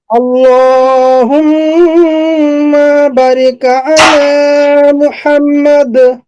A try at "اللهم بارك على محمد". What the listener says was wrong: اللهم بارك على محمد. এখানে একটু টান হবে, বাতে বাতে একটু টান হবে।